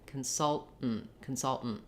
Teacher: They will say consultant with two aspirated T's, released T's. They will also say consultant with two stopped T's, and then that just sounds like you're stopping the air, doing a very short N, and stopping the air again.